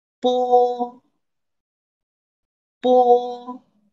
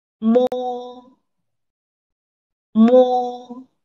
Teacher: you may feel that the air tries to come out from your nose so your nose is involved in the pronunciation